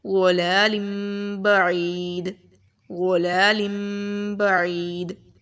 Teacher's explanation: قاعدہ ہمارے پاس سیم ہی ہے، نون ساکن کے بعد اگر با آ جائے یا تنوین کے بعد با آ جائے، دونوں میں قاعدہ سیم ہی ہے، اقلاب کریں گے، ٹھیک ہے؟ نون کی آواز کو ہم لوگ میم کے ساتھ بدل دیں گے